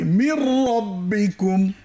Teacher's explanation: এখানে মিম নুন আছে, কিন্তু নুনটাকে আমরা পাশ কাটিয়ে রকে ধরবো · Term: গুন্না ছাড়া ঈদগাম